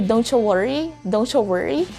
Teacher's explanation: they're trying to mix the sound of the letter t in the letter y so they end up producing the sound of ch · So it's the mixture of the sounds of the letter T and letter C, and that makes the CH sound, just like what's happening when people say don't you worry, don't you worry. They're trying to mix the sound of the letter T and the letter Y, so they end up producing the sound of CH.